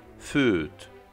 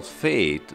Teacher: the English language lost the sound ø from its repertoire in favor of e, which is the same sound as before, but with unrounded lips